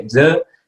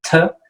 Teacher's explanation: You can feel the D. If you say D, you can feel the voice. You can feel the vibration here, okay? And then you say T, you don't feel that vibration, okay? It's a different type of plosive sound without vibration, okay?